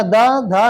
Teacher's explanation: ता बोलेंगे तो आपकी जीभ जो है दांत को स्पर्श करेगी बिना दांत को छुए आप ता नहीं बोल पाएंगे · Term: त वर्ग